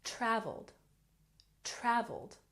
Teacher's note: traveled has emphasis on the first syllable